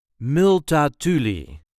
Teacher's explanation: There is a light emphasis on the third syllable.